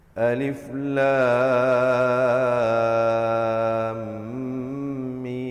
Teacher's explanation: Jangan lupa kita masukkan dengung di antara lam dengan mim itu. · Lam ditulis lam alif mim, dibacakan dengan panjang 6 harakat. Dan juga mim juga dibaca dengan 6 harakat.